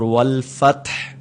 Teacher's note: اس میں تا پر قلقلہ نہیں کرنا، جھٹکا دے کر نہیں پڑھنا